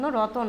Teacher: ত আর ন এদের মাঝখানে অ চলে এসেছে। এই তন এর মাঝখানে কিন্তু কোন স্বরধ্বনি ছিল না স্রভক্তিতে। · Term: স্বরভক্তি